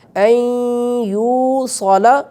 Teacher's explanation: کیا جائے گا، بِهِ أن يوصل، یہ غلط ہو جائے گا، یا کے بعد واو ہے حرف مدہ ہے تو اس حرف مدہ کی وجہ سے اسے تھوڑا سا ہم کھینچ کر ادا کریں گے